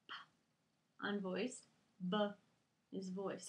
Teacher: This is a really cool lesson in Lexia, and they talked about the cognates of the letter, where the lips are making the same sound, but the only difference is one letter is voiced and one letter is unvoiced